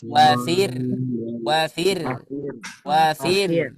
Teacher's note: memang dia Ro itu ada takrir ada getar cuman getarnya itu dikurangin